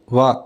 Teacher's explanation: దంత్యోష్ట్యం వా అంటే ఒకే ఒక్క దంత్యోష్టాల నుంచి పుట్టేటువంటి అక్షరం ఒకటే వా.